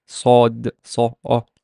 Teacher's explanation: Sad is one of the velarized letters that can affect the quality of the Fatha when it comes after it. So it does not become A, it becomes O. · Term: vowel shift